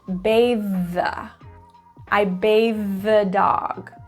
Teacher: Now notice bathe and the both end and start with the same sound. So you can say that TH one time.